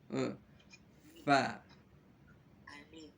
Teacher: Gigi atas, nih bertemu dengan bibir di bawah.